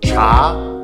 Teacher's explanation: cha is a second tone it's a rising tone so when we say it we need to start low and go up